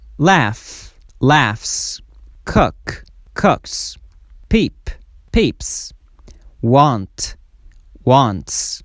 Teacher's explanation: قانون دوم، دوستای عزیز، اگر آخرین صدای یک کلمه بدون لرزه بود، باز اس و ایس به شکل س مثل سین تلفظ کنین. S or ES is pronounced as S at the end of verbs ending in a voiceless sound. Voiceless sound دوستا صدای بدون لرزه را میگن.